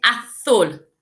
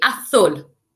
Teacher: The Z makes more of a TH sound